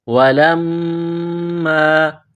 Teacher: وَلَمَّا، لام کو میم کے ساتھ ملانا ہے، میم مشدد ہے، غنہ کریں گے، آواز ناک میں چھپائیں گے